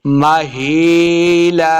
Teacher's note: ہا کو حلق کے نچلے والے حصے سے ادا کرنا ہے. ماہی یا مدہ ہے، اس کو 2 حرکات لمبا بھی کریں گے.